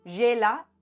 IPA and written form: ʒe.la (gela)